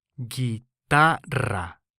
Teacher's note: this word ends in a vowel so by the nose rule the syllable before last is stressed